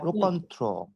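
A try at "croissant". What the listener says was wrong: না, রোকন্থ্র না, ঘকুন্থ বলেন। লাস্টের ওএস তো সাইলেন্ট আছে, তাই না? ওইটা নিয়ে তো চিন্তা করা যাবে না। ঘকুন্থ, রাইট, ঘকুন্থ,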